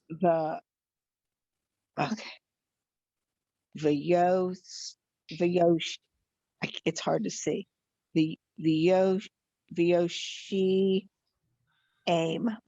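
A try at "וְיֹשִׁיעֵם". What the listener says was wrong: Exactly. Vyoshi aim. You did it.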